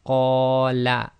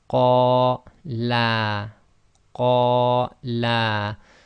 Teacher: the la was longer than the first la. So if you were to read this first word, qala, and accidentally say qala, then you've changed the meaning from he said to those 2 men said.